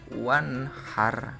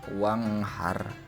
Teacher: Wanhar tidak boleh dibaca wanghar, itu tidak boleh ya, karena ini hukumnya adalah izhar, harus dibaca jelas.